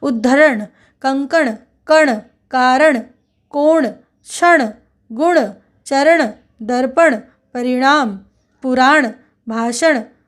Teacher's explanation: जो अण है उसमें अनुनासिकता लगातार व्यंजन के साथ लगी ही रहती है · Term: अणा की अनुनासिकता